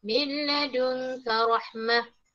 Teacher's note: Nun masukkan ke dalam lam, idgham bila gunnah tak dengung.